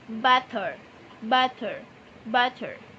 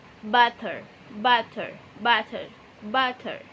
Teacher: produksinya selalu persis sama selalu ke arah punggung alveolar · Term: Flappy